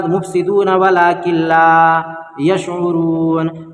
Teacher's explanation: اس کے بعد مفسدون ولکن لا یشعرون، نون ساکن کے بعد حروف یرملون کے 6 حرفوں میں سے لام ہے، اس لیے لام کی صورت میں بغیر گنہ کے ملا کر پڑھیں گے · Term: ادغام بلا گنہ